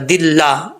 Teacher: अल्लाह के नाम से पहले ज़ेर है तो ये बारीक पढ़ा जाएगा